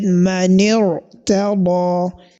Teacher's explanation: at-tafkhim, that is heavy pronunciation of this letter ra